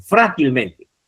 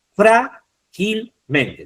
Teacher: Tenemos átona, la T, men sería la otra átona, gil sería otra átona y la sílaba tónica sería fra. Por tanto, T es la última, men, penúltima, gil, antepenúltima y fra, antes de la antepenúltima.